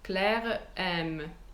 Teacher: I have to put in a glottal stop.